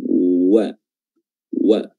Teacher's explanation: Wa idza, huruf waw, ya. Makhrajnya adalah dua bibir dimonyongkan